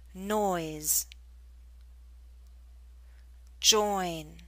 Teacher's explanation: So more of a mid position to a high position.